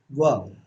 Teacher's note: अब वह ऐसा वर्ण है जिसको दंत और ओष्ठ दो की सहायता से बोलते हैं। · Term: दंत ओष्ठम